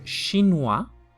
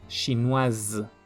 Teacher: en el masculino se va a pronunciar hasta la UA sin pronunciarse la S. Y en el femenino va a ser WAZ, con la S como Z